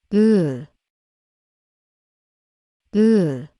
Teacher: see much more of the lower teeth than the upper ones the sound of uh is lowered and dulled and the corners of the lips look slightly down